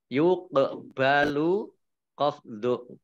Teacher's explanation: Qaf sukun, bacaan qalqalah, ya, memantul.